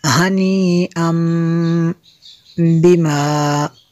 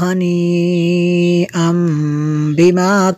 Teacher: کلوا واشربوا ہنیئا اس کے اوپر جو مد ہے مد متصل ہے، کیونکہ حمزہ اسی کلمے میں ہے، آگے تنوین کے بعد با ہے، تو یہاں پہ تنوین کے بعد اگر با ہو، نون ساکن یا تنوین کے بعد با آ جائے تو وہاں پہ انقلاب ہوتا ہے۔ جو تنوین کا نون ساکن ہے اس کو ہم میم سے چینج کر کے پڑھیں گے، اس کو ہنی ان کی جگہ ہنی بما پڑھیں گے۔